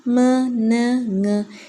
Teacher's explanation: The production of nasal sound m, n, ng in air escapes through the nose. Voiced sound ആണ് m, n, ng അല്ലേ.